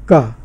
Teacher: का में जीभ का पिछला भाग जो है वो जो कंठ स्थान पर वहाँ पर जाके थोड़ा सा टच करता है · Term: व्यंजनों